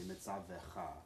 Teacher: It's just shifting the emphasis from the end to the second from last letter.